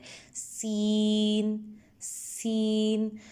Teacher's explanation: سین کو ہم دونوں دانتوں کے درمیان سے ادا کرتے ہیں اور سیٹی کی آواز نکلتی ہے اور اس کو باریک پڑھا جاتا ہے، سین سین، جبکہ صاد میں پورا منہ بھر کے یعنی آواز منہ سے نکلتی ہے اور اس کو موٹا پڑھا جاتا ہے، صاد صاد، ٹھیک ہے۔